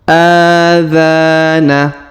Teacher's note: huruf a kita panjangkan dua harakat karena terdapat Alif kecil di atasnya huruf dza kita panjangkan dua harakat karena terdapat Alif di depannya